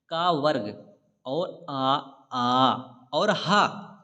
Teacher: का वर्ग और आ और हा, ये जो है कंठ से निकलते हैं